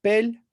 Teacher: the base form is pel with a high tone